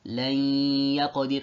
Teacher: As you can see, there is a ghunna. If you recite this word from the nasal pharynx, you'll see this nasal sound accompanying with the merging.